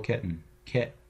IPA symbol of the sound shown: ʔ